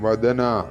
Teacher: ഇവിടെ ദ തൊണ്ട ചേർക്കാതെ ഉച്ചരിക്കേണ്ട ദായാണ്. അപ്പൊ അതുകൊണ്ട് അങ്ങനെ തന്നെ ഉച്ചരിക്കണം.